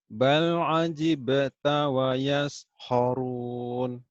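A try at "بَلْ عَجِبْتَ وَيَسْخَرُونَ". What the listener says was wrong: Bal ajibta wa yaskharun. Khawnya kurang ngorok. Khorok.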